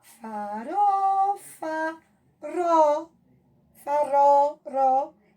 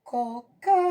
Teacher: O RO é a nossa sílaba tônica. Ele deu entonação mais alta.